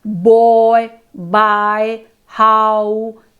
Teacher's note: the vowel sounds in the words boy, buy, how involve a change in the shape of the mouth as the vowel is being produced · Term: diphthongs